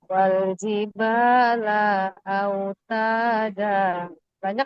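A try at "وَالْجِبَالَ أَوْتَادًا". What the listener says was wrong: Yang tak adanya cuman lamnya kepanjangan sedikit.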